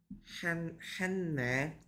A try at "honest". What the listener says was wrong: Honest. H 소리 안 납니다. Honest.